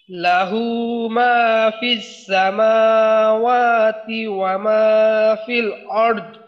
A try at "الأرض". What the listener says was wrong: আচ্ছা, দদের উচ্চারণে ধাক্কা লাগাইয়ে কলকলার মতো করা যাবে না, আরদ নরম ভাবে দদের উচ্চারণ শেষ হয়ে যাবে।